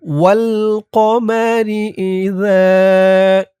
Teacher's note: যা, জালের উচ্চারণটা নরম হবে। জিহ্বার মাথা উপরের দাঁতের মাথার সাথে লাগবে এই জালের উচ্চারণ করার সময়